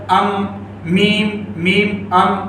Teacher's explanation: میم یہ ہونٹ سے نکلتا ہے، کہاں سے ادا ہوتا ہے؟ دونوں ہونٹوں کے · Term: شفوی